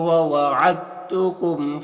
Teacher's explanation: दाल साकिन है और ता मुशद्दद है, तो दाल को ता से मिलाकर पढ़ेंगे, ठीक है, यानी दाल ता से मुदगम हो जाएगा, दाल ता से मुदगम हो जाएगा, दाल को नहीं पढ़ेंगे। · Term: इदगाम मुतजानिसैन